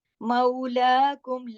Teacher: مولاکم یہ اصلی مد ہے، اس پہ کوئی نشان نہیں ہوتا. مولاکم، لا کے اوپر کھڑی زبر ہے، 1 الف کے برابر، 2 حرکات تک کھینچا جائے گا